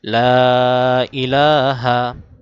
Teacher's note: লা তিন আলিফ টান, ইলাতে এক আলিফ টান